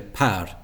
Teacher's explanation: there'll be a puff of air after the P um and that will quench the the the the the flame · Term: aspiration